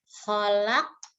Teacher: Nah, kemudian di akhir ayat di sini ada huruf qaf hidup ya, dibaca qalqalah.